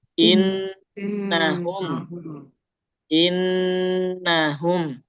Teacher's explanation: Tasdid bacanya harus ditahan. Khususnya nun bertasdid itu harus ditahan.